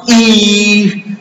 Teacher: If we pronounce E sound, the tongue goes up to closed position, so it is called a closed vowel.